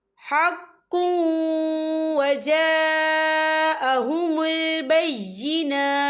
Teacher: وقف کی صورت میں تا جو ہے ساکن ہو جائے گا